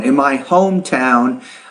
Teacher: hometown I would put stress more on the first word there sometimes when you have compound words like a compound noun in my hometown put more stress on that first noun